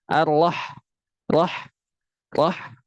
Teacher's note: Biarkan huruf H itu mengeluarkan nafasnya. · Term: hams